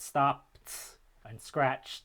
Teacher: the voiceless form after voiceless sound it stopped and scratched so instead of the voice duh you get the voiceless ta